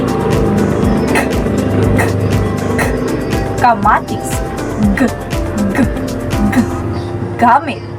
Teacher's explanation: ang ibabaw ng dulong dila ay dumidikit sa velom o malambot na bahagi ngala-ngala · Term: pangala-ngala